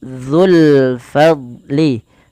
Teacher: Allahnya saja yang tebal, dzu tipis